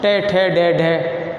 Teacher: मूर्धन्य ध्वनियाँ कहते हैं जब हमारी जीभ का नुकीला भाग ऊपर के मसूड़ों से टकराए